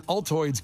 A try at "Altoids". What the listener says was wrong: No, you said Altoids like Aldi.